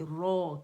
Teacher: रा की आवाज़ रा मुखफ़्फ़म होगी, रो करके पढ़ेंगे, ठीक है। 2 काउंट के लिए आवाज़ ऊपर जाएगी।